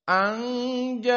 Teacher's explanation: Ayat yang kedua, anja'ahul a'ma, maka anja dalam keadaan ikhfa karena nun sakinah bertemu dengan jim, dan ja'a di sini mad wajib muttasil, dan tajwidnya dari usul qiraah Wars dibaca dengan al-isba' dan maknanya 6, dan ini paling banyak dari para qurra.